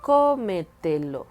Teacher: aquí es donde tenemos la sílaba con más fuerza que está antes de la antepenúltima